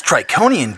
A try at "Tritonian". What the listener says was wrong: Tritonian. It's pronounced Tritonian. Tritonian. With a T in the middle.